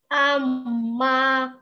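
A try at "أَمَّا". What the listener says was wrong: Mendengung dulu sayang. Mim. Kalau ada huruf mim sama nun bertasdid itu didengungkan tiga ketuk ya. amma seperti ini tadi, annahul am. Nah, tahan dulu.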